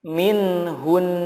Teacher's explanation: Nah, ketika waqaf dibacanya menjadi min hun. Min hun. Gunahnya tetap muncul.